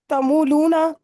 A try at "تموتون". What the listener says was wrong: لونا کہاں سے آ گیا؟ متون.